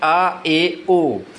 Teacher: अर्ध विवर्त स्वर कौन से होते हैं? जिसमें मुख आधा खुलता है